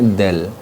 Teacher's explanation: Jadi ujung lidahnya bertemu dengan gigi seri atas. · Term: huruf dzal